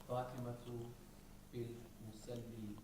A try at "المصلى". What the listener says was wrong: No, this is not a ya. This is a alif, brothers. There is no dots.